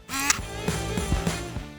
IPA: ʃ